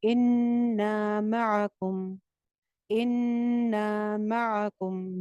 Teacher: نون چھت پہ غنہ کر کے اس کو ایک الف لمبا کریں گے